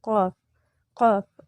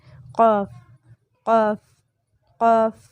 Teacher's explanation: اقصی لسان یعنی زبان کی جڑ جب اوپر تالو کے نرم حصے سے لگے تو قاف ادا ہوتا ہے۔ زبان کی بالکل جڑ جو ہے وہ بالمقابل اوپر لگے گی، اوپر کی طرف اٹھے گی، قاف قاف۔